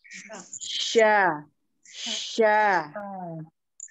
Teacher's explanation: huruf sya keluarnya dari tengah lidah bertemu dengan langit-langit tengah. Jadi sambil kita bayang sya, tengah-tengah lidah bertemu dengan langit-langit yang tengah gitu.